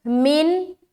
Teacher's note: नून साकिन और नून साकिन के बाद हमजा, तो यहाँ पर इजहार होगा, नून की आवाज सिर्फ जाहिर होगी